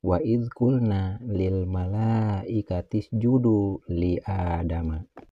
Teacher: ada huruf nun yang berbaris fathah menghadapi huruf alif mati. Ini dinamakan mad tabi'i. Harus dibaca panjang 2 harakat.